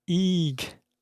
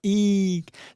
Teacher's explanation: Okay, so eek, that's like have a long sustained high pitched sound